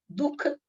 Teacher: जिह्वा मूल्य में उस विसर्ग का उच्चारण क होता है